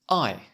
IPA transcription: aɪ